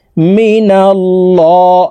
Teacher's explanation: লাম খারা জবর লামকে মোটা ভাবে পড়তে হবে অর্থাৎ বলে পড়তে হবে কারণ আল্লাহ শব্দের আগের হরফে জবর আছে